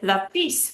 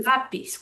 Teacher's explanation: We should say lápiz, but we say lápiz. We're stressing the second to last syllable.